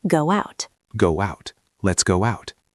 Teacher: Go ends in O. Out starts with O. We add W. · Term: little W